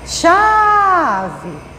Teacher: você demorou mais chamando a sílaba chá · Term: sílaba mais forte